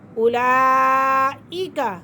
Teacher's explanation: اولئک، حمزہ کھڑا زبر آ اور مد، اولئک، کیونکہ حمزہ اپنی اصلی حالت میں ایک ہی کلمے میں موجود ہے تو یہ بڑا مد ہوا